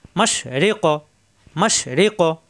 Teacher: জিব্বার গোড়া থেকে উচ্চারণ হবে আর ধাক্কা হবে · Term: কলকলা